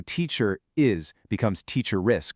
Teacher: Oh, and there's a super interesting special rule for British RP or received pronunciation. If a word ends in an R that is normally silent like teacher, it suddenly comes back to life to bridge the gap if the next word starts with a vowel